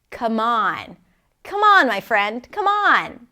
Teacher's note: Come on. And the stress is on the second part of the phrasal verb.